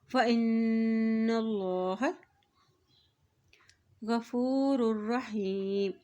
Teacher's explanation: फ़ाउ फ़इन्नल्लाह, यहाँ देखिए हमज़ा की ज़ेर को नून के साथ मिलाएंगे, नून के ऊपर शद है और जब भी नून के ऊपर शद आती है तो वहाँ पर गुन्ना अदा किया जाता है। यहाँ अल्लाह का नाम मोटा अदा किया जाएगा क्योंकि अल्लाह के नाम से पहले ज़बर आ गया है